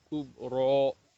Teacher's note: کاف کو باریک پڑھنا ہے اور آخر را کو منہ بھر کے پڑھنا ہے